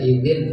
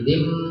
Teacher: Jadi bunyi nunnya itu digantikan dengan bunyi mim. Jadi dibacanya tidak idin gitu ya, tapi idim berubah jadi mim. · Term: iklab